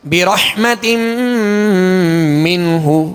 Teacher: ہا پر پیش ہے تو ہونٹوں کو گول کر کے بغیر کھینچے بغیر جھٹکا دیے معروف پڑھیں گے